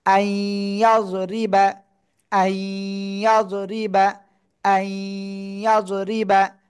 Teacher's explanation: নুন সাকিনের পরে ঈদগামে বা গুন্নার অক্ষর ইয়া আসছে, এজন্য গুন্নার সাথে মিলিয়ে পড়ব। আই, ইয়া জদ জবর ইয়াজ, রজের রি বা জবর বা, আই ইয়াজ রিবা, আই ইয়াজ রিবা, আই ইয়াজ রিবা।